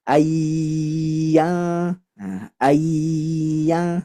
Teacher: Maka sudah dipastikan nun sukun atau tanwin bertemu dengan huruf ya, nun, mim, wawu, maka hukumnya idgham bi gunnah. Maka dengung yang lama.